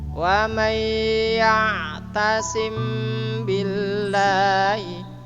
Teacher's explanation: Wa may agak dipanjangkan ya karena ada sabdunya. Ada huruf yang berdobel yaitu sabdu.